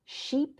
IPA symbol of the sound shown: i